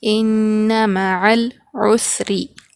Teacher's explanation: ان معل، عین سین پیش عس، را زیر ری، عسری، را کے نیچے زیر ہے تو ہم یہاں پر را کو باریک پڑھیں گے